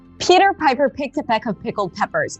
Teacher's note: really good for practicing the aspirated P, Peter, and the high E sound too